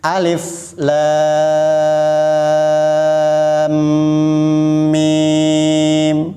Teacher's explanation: alif lam bertemu dengan mim dan kalau diurai ini mimnya bertasdid alif lam panjang dulu enam harakat baru masuk ke dalam mim yang bertasdid